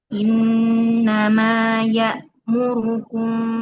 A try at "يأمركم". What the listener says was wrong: Tebal sedikit. Ru ya muru.